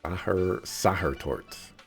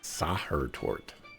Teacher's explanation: uneducated people here pronounce ch and h often as sh